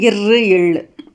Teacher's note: மேல்வாயை நாக்கின் நுனி வருடுவதால் பிறப்பது தான் வந்து இழு